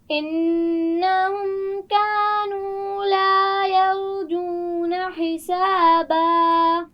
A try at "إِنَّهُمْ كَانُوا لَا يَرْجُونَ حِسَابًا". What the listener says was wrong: یرجون، را کو موٹا پڑھنا ہے. دوبارہ پڑھیے.